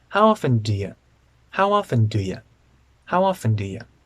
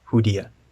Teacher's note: in the phrase do you the you is not usually stressed